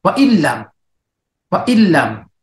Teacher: Hindi natin babanggitin yung nun. Didiristo tayo sa lam. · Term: bighairi gunna